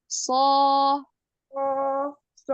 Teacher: pada huruf shad enggak ada shofirnya ya